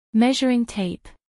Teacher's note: Acentuación en la primera sílaba.